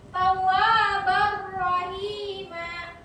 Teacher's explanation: Idgham bil gunnah artinya memasukkan huruf tanpa dengung, tidak berdengung